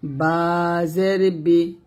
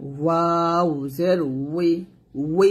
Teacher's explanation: বাজের বি দুই ঠোঁট মিল করে বলবো, ওয়াউজের উই দুই ঠোঁট আমরা গোল করে বলবো